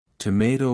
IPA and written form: təˈmeɪtoʊ (Tomato)